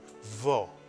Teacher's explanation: Israelis tend to pronounce it a little bit shorter and softer, vo, instead of vo, vo.